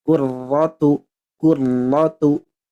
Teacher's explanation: Nah, yang saya pelajari itu marrotan wahidah. Jadi getarannya cukup sekali saja. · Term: tikror